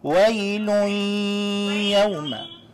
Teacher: give the ghunnah just a tad bit more time. Give it about 1 more second.